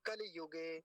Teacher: शब्द में लकार पर ह्रस्व इकार तो इकार की आवाज भी आनी चाहिए